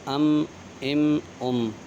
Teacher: میم کا مخرج ہے دونوں ہونٹوں کے خشکی کے حصے سے ادا ہوتا ہے۔ خشکی یعنی سوکھے حصے سے ادا ہوتا ہے میم۔